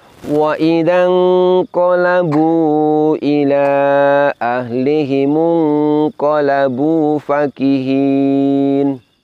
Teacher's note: Lafaz fakihin di sini fa-nya berharokat fathah dan dibaca pendek. Hati-hati jangan sampai fa fathahnya dibaca panjang.